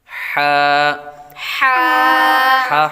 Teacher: حلقے درمیان والے حصے سے ادا ہوتا ہے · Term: حروف حلقیہ